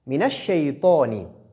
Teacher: Shin ici sort du milieu de la langue, ay wasatul lisan, en s'appuyant sur le milieu du palais. Ay ma'al hanakil a'la, dans la bouche, au milieu du palais.